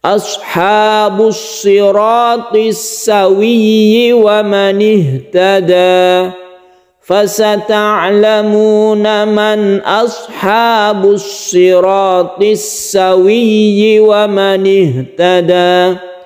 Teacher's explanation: Perlu juga dicatat di sini, 'tasydid' pada 'shad', kita tekan pada 'shad'. Kemudian huruf 'r' dipertebal karena 'fatha tafkhim '.